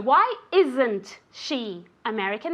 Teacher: There has to be a very clear difference between the Z sound and the sh sound.